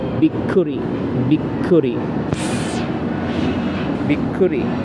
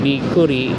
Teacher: stress sound or clipping sound there's a stress sound put a put an emphasis or stress in that K